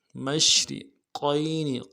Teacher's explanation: ملانا ہے، رب المشرقین، میم کو شین کے ساتھ ملانا ہے، شین حرف تفشی میں سے واضح کریں گے اور را کو باریک ادا کریں گے ، مشرقین، قاف کو موٹا کریں گے، یا کے ساتھ ملانا · واضح کریں گے اور را کو باریک ادا کریں گے، مشرقین، قاف کو موٹا کریں گے، یا کے ساتھ ملانا ہے، یا لین ہے